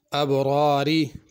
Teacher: پہلی را ابرار میں پر ہوگی، دوسری باریک ہوگی